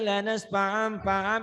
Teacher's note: cuman bunyi tanwinnya berubah menjadi bunyi m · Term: iklab